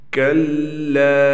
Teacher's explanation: یہاں پر ہم لام کو ایک الف کے برابر کھینچیں گے. حروف مدہ آ رہا ہے، الف ہے حروف مدہ میں سے، اس کے بعد الف سے پہلے زبر ہے، لہٰذا اس کو ہم ایک الف کے برابر کھینچ کر پڑھیں گے.